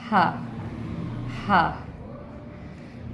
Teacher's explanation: हलक के नीचे वाले हिस्से से, ठीक है, हलक के नीचे वाले हिस्से से जो है वो हा अदा होगा। हलक के नीचे वाले हिस्से से हा अदा होगा